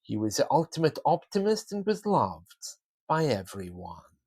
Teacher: I was also doing some intonation there starting High bringing my voice down